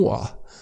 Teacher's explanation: It's true Londoners would pronounce it that way. Some Londoners, Cockney accents, would drop the T's, would not pronounce it. Would pronounce it rather as glottal, like in the throat.